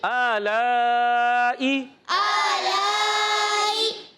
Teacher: کھینچیں گے مد کو، مد متصل ہے